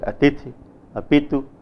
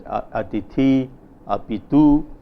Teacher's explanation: So, given a word such as, if we pronounce faithfully the written words atithi, apitu, the final vowels appear to be short, but actually in reality we hear the words produced as atithi, apitu. This process of the final lengthening of vowels is termed as vowel lengthening in Hindi.